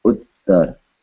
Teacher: Ta with the tip of the tongue touching the back of the top front teeth, followed by ra.